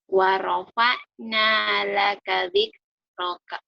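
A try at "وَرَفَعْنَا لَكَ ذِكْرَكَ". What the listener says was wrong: Itu kalau dibaca apa adanya bener. Wa rafa'na laka dzikraka. Kamu pinter ya, minta double.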